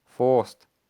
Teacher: Dubliners less likely to pronounce their R's, for example this word being pronounced as forced, or the glottal stop, like in this word, pronounced bottle, features in modern British English but not present in Irish English or Gaelic.